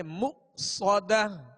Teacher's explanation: حمزہ ساکن ہے، اس کو جھٹکے سے ادا کریں گے